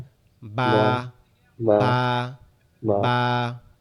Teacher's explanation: বাটা আমাদের দুই ঠোঁট একসাথে লেগে থাকবে, লেগে পৃথক হয়ে বা, যাবে, বা, বা, বা, বা, বা, বা।